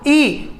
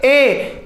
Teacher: ई के मुकाबले ए में मुख ज्यादा खुल रहा है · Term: अर्ध संवृत